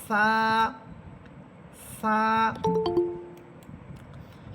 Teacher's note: সা হরফ জিহ্বার অগ্রভাগ সামনের উপরের দুই দাঁতের আগার সাথে লাগবে। সা এবং একারে টেনে পড়তে হবে।